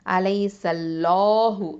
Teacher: அல்லாஹுங்கிற அந்த லாமை வந்து ஹெவியாக உச்சரிக்கணும், வல்லினமாக உச்சரிக்கணும்